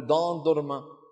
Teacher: دان درما بدال مفخمة وليست ضاد، لأن الاتكاء عندهم يكون على ماذا؟ على مقدم اللسان وعلى طرفه الأمامي